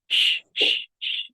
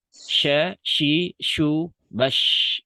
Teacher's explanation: Shin sukun letak hurufnya ada di tengah lidah. Tengah lidah yang naik ke atas ya. Bekerja sama dengan langit-langit mulut di atasnya. Dan sama-sama menghembuskan udara.